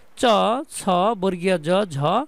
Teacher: তালব্য বর্ণ হচ্ছে মূর্ধার আরও উপরের দিকে, একদম নরম তালু অংশে একদম উপরের দিকে জিহ্বা চলে যাবে।